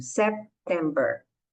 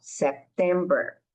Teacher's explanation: Em September, esse P é bem suave. September, a gente fecha a boca um pouquinho.